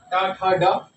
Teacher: मूर्धा या मूर्धन्य वर्ण कहते क्योंकि ये मूर्धा से बोले जाते हैं। ट वर्ग के जितने भी वर्ण है वो मूर्धन्य कहलाते हैं।